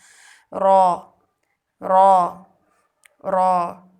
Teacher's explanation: زبان کی نوک کی پشت کو اوپر کے سامنے والے 4 دانتوں کے مسوڑوں سے لگا کر موٹی آواز میں ادا کرنا. را را را.